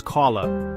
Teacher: you must make the vowel sound last for 2 beats, or 2 harakat. Think of it as saying the vowel sound twice. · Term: natural mad